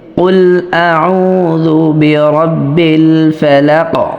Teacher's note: আর যদি সেই হরফটা হয় কলকলা হরফ, তাহলে অবশ্যই কলকলা করতে হবে, কেননা কলকলা হরফগুলো সাকিন অবস্থায় কলকলা হয়ে থাকে। তো যেহেতু অক্ফের কারণে কফে সাকিন হয়ে গেছে, এজন্য আমাদের কফে কলকলা করতে হবে।